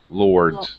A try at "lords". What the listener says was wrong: You're kind of missing the D sound. Lords. Lords. Well, I'm not hearing the D, like dog. Duh.